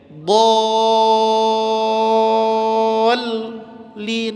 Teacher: Maka mad lazim ini wajib, harus, mesti dibaca 6.